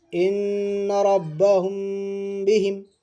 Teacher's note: میم ساکن کے بعد با آ رہا تو گنہ کے ساتھ اخفاء ہوگا ، یہ ہمارا اخفاء شفوی ہے۔ حمزہ نون سے ان، نون